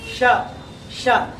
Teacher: ನಾಲ್ಗೆ ಫ್ಲಾಟ್ ಆಗಿ ಮೇಲಕ್ಕೆ ಹೋಗ್ಬಿಡುತ್ತೆ. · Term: ಮೂರ್ಧನ್ಯ